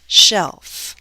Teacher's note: the final content word is a one syllable word like shelf my voice glides down because i only have one syllable one vowel sound to go down